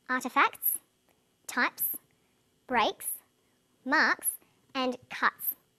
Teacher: The second way S is pronounced at the end of a word is s. It's pronounced this way after voiceless consonants. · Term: final S